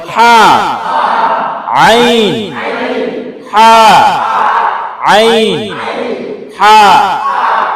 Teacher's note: এই হাটা হইলো গলার মাঝখান থেকে একটু চাপ দিয়া বলেন